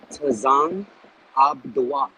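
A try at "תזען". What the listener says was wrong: So as opposed to being Tazan, it would be Taza'an. Taza'an.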